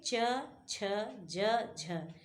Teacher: च वर्ग के च, छ, ज, झ ये 4 वर्ण जो है स्पर्श संघर्षी में गिने जाते हैं।